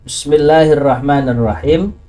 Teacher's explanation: Ra keluar dari pucuknya lidah. Yang namanya lidah itu kan ada pucuk, ada tengah. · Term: huruf ro